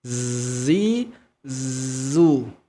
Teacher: bunyi Zai di sini sama antara Za yang berharakat kasrah dengan Za yang berharakat dhamah bunyi hurufnya sama yang membedakan adalah bunyi harakat jadi bunyi hurufnya sama Z bunyi harakatnya berbeda Jadi yang pertama